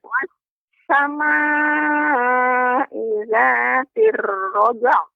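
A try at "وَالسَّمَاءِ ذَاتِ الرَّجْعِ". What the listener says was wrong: Ya, tapi terus butuh ya nanti latihannya agar ainnya lebih lembut lagi pengucapannya.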